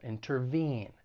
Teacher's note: the verb has three syllables the stress is on that third syllable